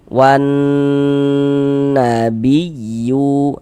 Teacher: Maka karena dia ghunah musyaddadah, cara membacanya kita gunahkan. Jadi bagian wan suaranya kita tahan, kita panjangkan sejenak.